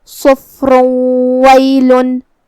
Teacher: تو ہم یہ تنوین کو واو میں ملا کے غنہ اور تشدید کے ساتھ یہ حکم کو ادا کریں گے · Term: ادغام